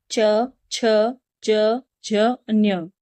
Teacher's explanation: जैसे च वर्ग के। इस वर्ग के जितने भी वर्ण हैं उसमें हमारी जीवा क्या करती है? तालू को टच करती है। · ऐसे वर्ण जिनका उच्चारण करते समय हमारी जीवा तालु को टच करती है